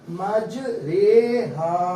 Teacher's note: را امالہ والے رے کہہ کے پڑھتے ہیں اس کو. اس میں ہم نے آواز کو قطرے کی انداز سے پڑھنا ہے, مجریہا.